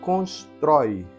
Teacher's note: é o troi melhor dizendo termina em ditongo aberto